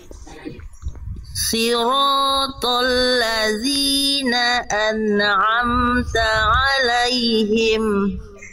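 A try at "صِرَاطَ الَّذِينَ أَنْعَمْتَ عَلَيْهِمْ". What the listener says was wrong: Tinggal shotnya. Tadi saya sudah mendengar shot Bunda yang lebih baik daripada ini. Tebalkan lagi ya, angkat lagi pangkal lidahnya. Siratal ladzina coba.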